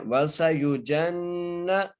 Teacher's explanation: جیم کو نون سے ملانا ہے اور نون پر غنہ کرنا ہے